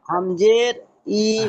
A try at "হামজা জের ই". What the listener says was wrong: হামজের নয় হামজা, বলেন হামজা।